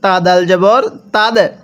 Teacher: এই দালটা আমরা ধাক্কা দিয়ে পড়ব। কলকলা হরফ যেখানে দেখবো সেখানে ধাক্কা দিয়ে পড়তে হবে।